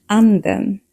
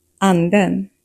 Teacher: There are two pitch accents. Accent one, acute, a quick rise in tone, and accent two, grave, a double pulse or fall rise tone.